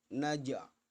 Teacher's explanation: Naj itu bacaan qalqalah. Naj berupa huruf jim yang mati, maka harus dipantulkan.